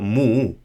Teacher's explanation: So with a slight H sound at the end, not really an obvious H sound. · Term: change in tone